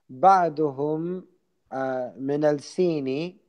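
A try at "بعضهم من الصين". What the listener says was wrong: The sad is a sun letter, so we do not pronounce the lam. من السين. Did I hear the lam still?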